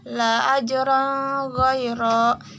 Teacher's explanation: Huruf ro dibaca takfim atau ditebalkan karena berharokat fathah.